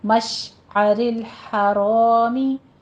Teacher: مش شین پہ سیٹی کی آواز لائیے